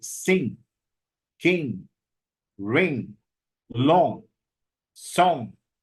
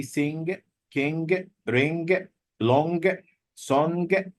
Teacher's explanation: It has the place of articulation of ga and the manner of articulation of na. So it's velar and nasal. Velar and the nasal.